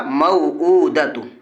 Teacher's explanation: حمزہ کے اوپر الٹا پیش ہے، الٹا پیش برابر ہوتا ہے وا مدہ کے، اس لیے الٹا پیش کو ایک الف کے برابر کھینچ کر پڑھیں گے۔